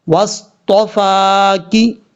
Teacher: اور یہ واو ہے، واو کو پڑھتے وقت ہونٹ گول کر کے پڑھیں گے، اور تا کے بعد جو فا ہے، فا کے اوپر کھڑا زبر ہے، اس کو 1 الف کی مقدار لمبا کر کے پڑھیں گے۔ واصطفا کی، کاف کے نیچے زیر ہے، کاف زیر کی، اور جب بھی کسی حرف کے نیچے زیر ہو تو اس حرف کو جھکا کے پڑھا جاتا ہے۔